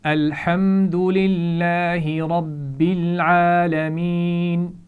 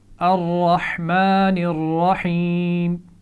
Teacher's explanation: را پر زبر ہے، اس کو ہم موٹا پڑھیں گے، اسی لیے اس کو الگ رنگ میں بھی دیا گیا ہے تاکہ آپ کو یہ یاد رہے کہ اس کو موٹا پڑھنا ہے۔